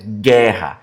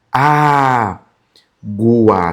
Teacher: Esse gu em algumas situações, não vai aparecer o u. Só o som do g